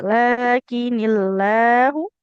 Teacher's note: Lafaz Allah itu lamnya akan tipis kalau huruf sebelumnya kasroh ya.